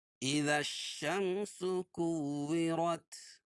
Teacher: وہاں لام نہیں پڑھی جائے گی، ذال کو ڈائریکٹ شین میں ملائیں گے۔ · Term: حروف شمسیہ